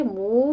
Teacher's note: منہ میں واو مدہ ہے، ان دونوں ہونٹوں کو گول کرتے ہوئے 2 کاؤنٹ کیجئے